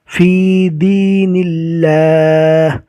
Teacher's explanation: اللہ کا لام باریک ہوگا اس لیے کہ اللہ کے لام سے پہلے زیر آیا اور زیر رکنے کی حالت میں جزم بن جائے گا۔